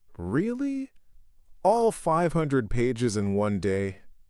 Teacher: a falling intonation might suggest a more skeptical, Is that so? or a thoughtful consideration.